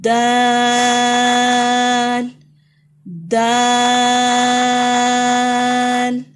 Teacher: یہ وہیں سے ادا ہوگا جہاں سے تا ادا ہو رہا ہے اور اس کو لمبا کر کے پڑھیں گے